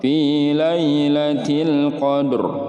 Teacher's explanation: Alif lamnya dibaca jelas. Tidak boleh qalqalah atau memantul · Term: alif lam qamariyah